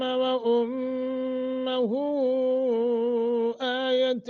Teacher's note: اور پھر مد منفصل ہے، لمبا کر کے پڑھیں گے